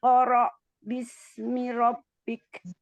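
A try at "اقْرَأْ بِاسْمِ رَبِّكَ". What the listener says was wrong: Masya Allah. Ahsan. Lanjut.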